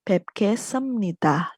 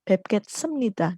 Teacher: B-nya ini disamakan dengan bunyi sengau M